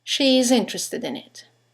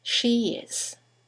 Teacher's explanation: all run into each other she is interested in it and there's a semivowel y that links the vowel at the end of she to the vowel at the beginning of is